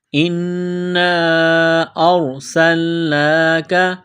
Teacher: حمزہ کو را کے ساتھ ملانا ہے سین کو لام کے ساتھ ملائیں گے سین کو باریک کرنا ہے سین میں سیٹی کی آواز پیدا